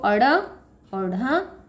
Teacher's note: ड और ढ इनको बोला जाता है द्विगुण व्यंजन और इनमें र की ध्वनि मिली हुई है। जब इनका उच्चारण करते हैं तो कहा जाता है कि इसमें र की ध्वनि मिली हुई है।